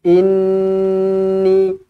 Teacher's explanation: Nun yang bertanda sabdu wajibul gunnah. Dengungkan 2 harokat. Jangan kurang daripada 2 harokat.